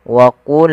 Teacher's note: Pada lafal wa qulna ya, qa salah satu huruf yang dia kita namakan dengan salah satu sifatnya adalah sifat huruf isti'ala, yang mana pangkal lidah kita harus kita angkat sehingga terdengar suara qa-nya menebal.